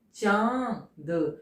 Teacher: इसमें नाक और मुंह दोनों से आवाज निकलती है, दोनों का प्रयोग होता है चांद। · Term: अनुनासिक